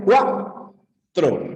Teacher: se forma mediante una vocal cerrada más una vocal abierta siempre la segunda vocal es la vocal tónica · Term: diptongo